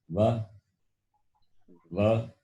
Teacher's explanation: It is combination of the two places of pronunciation, teeth as well as the lips. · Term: dental as well as labial